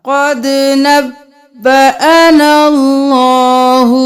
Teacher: یہاں پر قد نبا نہیں کرنا، نب اور پھر با دو بار